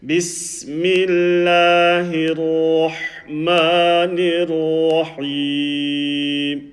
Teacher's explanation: The ra full mouth, the ha with the sukoon from the middle of the throat, and then over here ra full mouth and ha with from the middle of the throat.